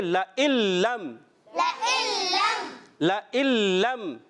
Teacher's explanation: نون لام میں ملے گا تو پڑھیں گے, اس کو ادغام بلا غنہ کہتے ہیں